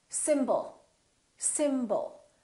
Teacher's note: you let's take a word like symbol we have two syllables the first syllable is stressed and the second syllable is reduced when we have a reduced vowel we don't pronounce it fully